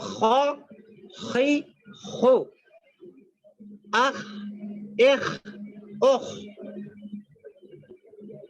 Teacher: حلق کے منہ کی جانب والے حصے سے ادا ہوتا ہے. حلق میں یعنی اوپر سے.